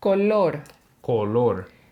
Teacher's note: I was pronouncing the O So my lips were kind of rounded